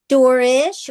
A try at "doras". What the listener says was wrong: Yeah, no, not ish, Dorash. Dorash. Like Dorash. Dorash. Gives us the SH sound.